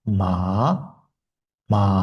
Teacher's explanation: Ikkinchi ton 35, ya'ni 3-darajadagi shkaladan to beshinchi daragacha chiqish. Ya'ni pastdan tepaga chiqadi.